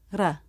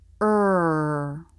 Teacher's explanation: between vowels but it's quite different from the American r ER you can't hold out ra but you should be able to hold out the American r ER this consonant is voiced there are two ways to make